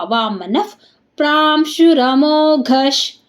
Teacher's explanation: ನ ಮುಂದೆ ವಿಸರ್ಗ ವಿಸರ್ಗದ ಮುಂದೆ ಪ ಇದೆ ಅದಕ್ಕೆ ಅರ್ಧ ಪ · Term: ಅರ್ಧ ಫಾ